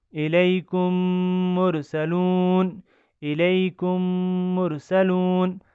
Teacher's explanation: ادغام شفوی، اس میں ہمیں غنہ کرنا ہے، ایک میم کو دوسرے میم کے ساتھ ملا کر پڑھنا ہے۔